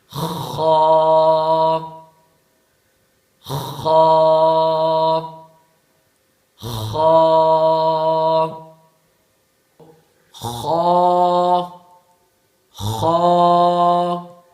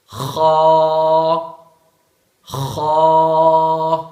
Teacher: گلے کا وہ حصہ جو منہ کی طرف ہے اس سے خا ادا ہوتا ہے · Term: ادنا حلق